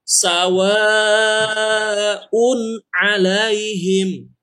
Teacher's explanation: Ingat teori yang sebelumnya, kalau tanwin atau nun mati bertemu dengan ain, dia dibacanya masih un. Jadi nun ya, tidak berubah menjadi dengung atau eng.